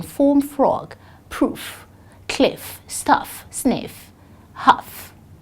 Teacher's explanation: F is a voiceless too. It is a fricative, as in form, frog, proof, cliff, stuff, sniff, huff.